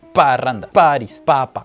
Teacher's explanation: O bueno, otro ejemplo claro de una consonante podría ser la consonante P, que el aire sale un poco a las malas, sale obligado porque tú cierras tus labios y le permites una circulación mínima, entonces queda un sonido como de explosión